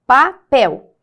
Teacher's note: papel a sílaba tônica é a última